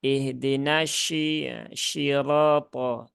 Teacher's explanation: huruf shin itu kan ada di tengah lidah, langit-langit atas